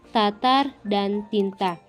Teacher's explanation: yang bercirikan mati oral apikodental dan plosif